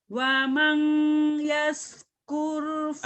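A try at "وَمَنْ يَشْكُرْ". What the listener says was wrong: Bukan wamang, itu idgom, wamai. Idgom, kan ada tasdid nih. Kalau ada tasdid berarti nyamber, wamai. Jangan wamang, wamai ya idgham. Wamainya ditahan sedikit. Wamai yashkur. Shinnya gede. Wamai yashkur. Shin.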